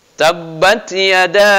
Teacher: da-nya ini itu adalah harus dibaca panjang dari 3 sampai 5 harokat, karena dia adalah mad jaiz mumpasil.